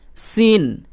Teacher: এটি জিহ্বার আগা, নিচের দাঁতের গোড়ার একটু উপর এবং আগার একটু নিচে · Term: বড় সিন